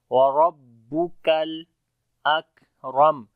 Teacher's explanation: را کو موٹا پڑھیں گے اور کاف کو باریک پڑھیں گے، لام کے ساتھ ملائیں گے